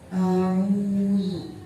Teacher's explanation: Di situ ada mad wawu didahului dengan huruf ain yang berharakat dhammah, maka cara bacanya panjang. Panjangnya 1 alif atau 2 harakat